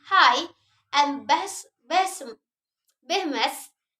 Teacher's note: Say the word and notice how you are not actually constructing or blocking airflow for the sound